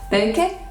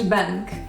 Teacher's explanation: there is no sound b in Maori, so it is replaced by its voiceless version p. The sounds n and k become one, and the vowel is added at the end because every syllable has to be open, and we get peke.